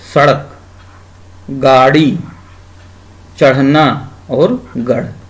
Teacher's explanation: इनका उच्चारण करते समय जिह्वा झटके से ऊपर उठती है, ठीक है, ऊपर जाती है या ऊपर उठती है, इन्हें उपसृप्त व्यंजन कहते हैं।